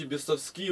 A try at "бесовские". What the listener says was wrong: Бесовские, понимаешь, как вот куда ударение держишь, на последнее. Бесовские.